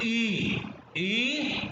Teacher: हमारी जीभ हल्की सी टच कहां पे हो रही है? तालु पे टच हो रही है हल्की से। ये बोल के देखना, ई, ई हमारा हल्का सा जो है ना, वो तालु पे लग रहा है।